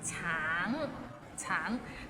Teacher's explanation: the end has a little ng, so it's a bit of nasal sound